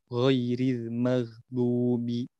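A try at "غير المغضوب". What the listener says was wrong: Ini jadi ya, antum ini mesti seperti mengarah pada G Latin ya, bahasa kita ya, gaga, gigi, gugu ya, kayak kita. Nah, kalau ghain dalam bahasa Arab ini mesti lebih tebal dari bunyinya dan dari sifatnya.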